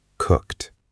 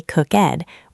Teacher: Notice that the ED sounds a little bit like a T sound at the end.